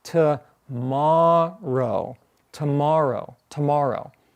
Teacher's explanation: is if I say tomorrow that's a three syllable word but the syllable in the middle the syllable that's accented is longer than the other syllables · the syllable in the middle, the syllable that's accented, is longer than the other syllables, right? So if I say tomorrow, tomorrow, tomorrow, the syllables are not the same length.